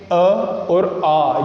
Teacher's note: अ और आ, यानी सीधे से ध्वनि कंठ से उच्चारित होती है, बिना रुकावट के बाहर आती है, तो इनका उच्चारण स्थान हो गया कंठ।